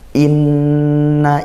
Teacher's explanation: Nun bertasydid yaitu ghunah kita baca dengung yang lama ya yaitu satu Alif atau setengah Alif seperti itu tempo lama